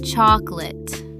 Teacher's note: Looks like 3 syllables. Chocolate. But most Americans say it in 2. Chocolate. That middle O just disappears completely.